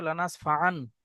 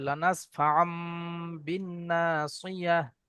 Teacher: নুন সাকিন বা তানবিনের পরে যদি বা আসে, একলাবের কায়দা, নুন সাকিন বা তানবিনের পরে যদি বা আসে, নুন সাকিনকে অথবা তানবিনের আওয়াজকে মিমের দ্বারাই পরিবর্তন করে পড়তে হয়।